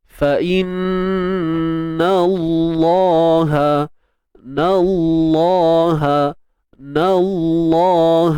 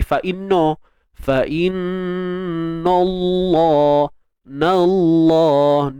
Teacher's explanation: ingat bunyi na dulu baru tebal lam.